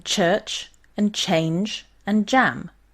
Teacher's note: these are the palato alveolar affricates and are sounded by placing the blade or tip of the tongue behind the alveolar ridge · if you listen extremely closely you can hear where the plosive is followed by a fricative